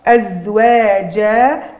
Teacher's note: أزواجا، عندي أصلها كانت أزواجا تنوين الفتح، وقت باش نقفوا عليه تنوين الفتح يصبح مد عوض، بدلنا عوضنا النون الساكنة بألف مد، ولا يجوز فيه إلا القصر، ما عنديش حق باش نزيد طول أكثر من القصر.